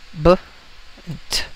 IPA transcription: b - t